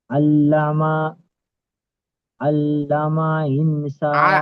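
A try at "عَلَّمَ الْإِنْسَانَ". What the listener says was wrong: আল্লামাল, মিম লামের সাথে যুক্ত হয়েছে দেখেন, আল্লামাল।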